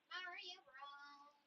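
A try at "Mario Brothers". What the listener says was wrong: Yeah, it's pronounced brothers, not bros.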